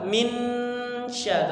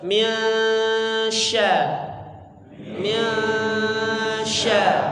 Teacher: nun sukun bertemu dengan huruf shin ya, didengungkan ya, kemudian dibaca samar-samar disertai dengung ya. Mia seperti eng tapi bukan eng, bukan ming tapi miasya, samar-samar ya, bukan juga min sya tapi miasya.